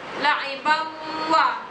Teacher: tanwin berjumpa dengan waw, mestilah didengungkan sekadar dua harakat. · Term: idgham ma'al gunnah